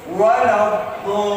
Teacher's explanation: Masih banyak imam-imam rawatib membacanya itu waladdallin, menaikkan intonasi di lam tasdidnya